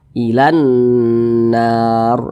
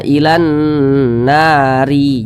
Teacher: Ini kita baca ilan nar. Huruf ro nya kita sukunkan. Jangan dibaca ilan nari, jangan. Tapi huruf ro kita sukunkan atau kita matikan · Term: mad arid li sukun